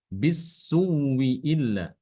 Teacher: Hamzah pertama itu dia diubah menjadi wawu. Ya. Pertama diganti dengan wawu, kemudian wawunya diidghamkan ke wawu berikutnya ya. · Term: mengidghamkan hamzah